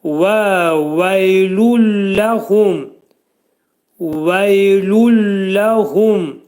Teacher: Hu dolu oxunur. H hərfinin məxrəci boğazın aşağısından çıxarılır. Hum dedikdə hu dolu oxunur.